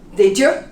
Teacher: the y becomes a j